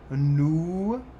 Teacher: We have the nous, which is a nice round oo, like you'd probably do in English or like you'd hear in German.